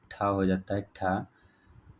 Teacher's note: मूर्धन्य महाप्राण अघोष व्यंजन वर्ण का उदाहरण कौन सा हो जाता है?